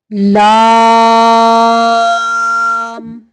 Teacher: لام، لا نہیں پڑھنا، اس کو لام زبر الف لا. لا، لا کرتے ہوئے آواز کو نکالنا ہے، ناک میں آواز کو نہیں لے کے جانا